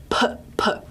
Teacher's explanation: if you put your hand up in front of your mouth, p, p. Okay, you should feel a puff of air come out. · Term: voiceless